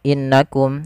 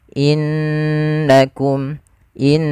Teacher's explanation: harusnya ditahan dulu innakum in sambil dimasukkan ke rongga hidung kita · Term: bacaan gunah